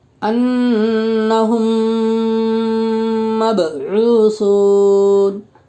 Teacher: با کے اوپر جزم ہے، با میں قلقلہ ہوگا، اس لیے کہ با حروف قلقلہ کے 5 حرفوں میں سے ہیں.